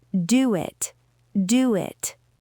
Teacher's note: The word do ends with rounded lips. The word it begins with a vowel. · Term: W bridge